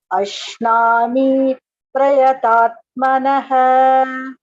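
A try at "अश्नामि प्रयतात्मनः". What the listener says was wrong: மீ தீர்க்கம் இல்ல. அஷ்னாமி பிரயதாத்மனஹ.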